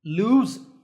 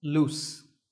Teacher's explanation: ‘lose’ has a /z/ sound at the end and ‘loose’ has a ‘s’ sound at the end